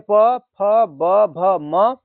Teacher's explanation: प वर्ग में प, फ, ब, भ, म, और फिर छोटा ऊ और बड़ा ऊ का उच्चारण स्थान क्या हो जाएगा, ओष्ठ हो जाएगा · जिसका उच्चारण ओष्ठ होता है उसको हम लोग किस वर्ण के अंतर्गत रखते हैं, तो ओष्ठ वर्ण के अंतर्गत रखते हैं